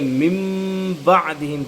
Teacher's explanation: نون ساکن کو جو ہے ہم میم سے تبدیل کر دیں گے، یعنی نون کو نہیں پڑھیں گے، نون ساکن کو ہم نہیں پڑھیں گے بلکہ من بعدہم پڑھیں گے۔ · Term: اقلاب